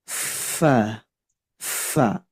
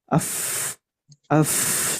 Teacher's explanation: huruf Fa dia tidak ada getaran di tenggorokan dia ada nafas yang keluar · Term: sifat Hames